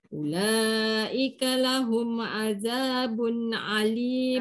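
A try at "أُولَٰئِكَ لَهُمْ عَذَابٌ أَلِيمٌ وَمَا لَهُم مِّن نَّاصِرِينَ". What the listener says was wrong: Jangan alim. Kalau alim tu lain maksud dia tu. Dia Hamzah Ali. Azabun alimun wa ma. Mat mutasil. Ulaika lahum.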